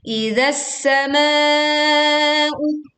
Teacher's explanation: Sehingga kita langsung memasukkan huruf sin idzas sama. Ditekan sin dengan suara yang tajam, seruit tajam dan suara tipis